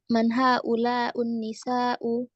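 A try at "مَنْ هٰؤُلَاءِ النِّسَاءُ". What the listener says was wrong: Kok U? Haulai nggak bisa jadi haulau ya.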